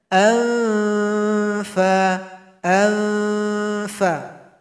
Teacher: tempat keluarnya gigi seri atas menyentuh ke bibir bawah kita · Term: huruf Fa